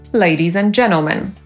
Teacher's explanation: Literę „t” możemy też pominąć w słowie „dżentelmeni” albo „panowie”. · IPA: /ˈdʒenəlmən/